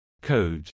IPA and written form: koʊd (Code)